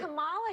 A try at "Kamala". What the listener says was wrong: It's Kamala, not Kamala. It's Kamala. Kamala Harris, not Kamala. You put the emphasis on the wrong syllables, so you're a racist.